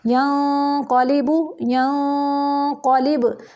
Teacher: ادھر اخفا کو پر کریں گے کیونکہ قاف آ گیا ہے قاف پر حروف میں سے ہے ینقلب ینقلب یوسوس یوسوس ثقلت